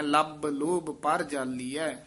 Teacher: ਪਰ ਅਤੇ ਜਾਲੀਐ ਦੇ ਵਿੱਚ ਡੈਸ਼ ਦੇ ਕੇ ਲੰਮੀ ਆਵਾਜ਼ ਨਾਲ ਉਚਾਰਨ ਕਰਨਾ